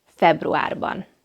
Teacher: februar has both front and back vowels, but the last vowel is a back vowel. a Therefore, it takes the back vowel ending ban.